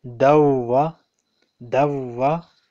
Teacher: after Dal Tanween, we have Vow Shadda. So, we will ignore, we will omit that Noon Sakin.